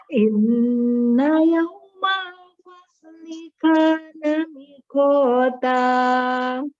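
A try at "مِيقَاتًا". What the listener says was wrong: Bukan miko, miko. Mi-nya panjang ya, mi panjang, mi panjang. Jadi itu tadi di awalnya diambil kunci iramanya ketiga. Nada, inna. Coba nada yang kedua datar. Inna yawmal fasli kana miqata.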